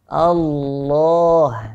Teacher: lafadz lamnya yang kita baca tebal tadi ini dipanjangkan 2 harokat meski di sini tidak ditulis seperti ada ada madnya di Alquran